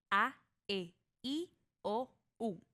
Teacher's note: Nota que para decir a abres mucho la boca y para i la cierras un poco más.